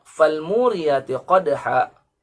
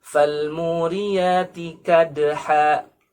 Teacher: Huruf qaf yang menyerupai huruf kaf, atau bahkan menjadi huruf kaf betul, menjadi kadha.